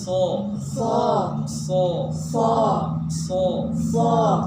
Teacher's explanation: angkat suaranya tapi tidak memajukan kedua bibir